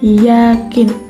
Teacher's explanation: Caranya itu mempersempit aliran udara di rongga mulut tanpa menghasilkan geseran. · Contoh katanya itu yakin. Jadi, lidah bagian depan kita itu mendekati langit-langit mulut untuk menghasilkan bunyi yakin. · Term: cara artikulasi hampiran, hampiran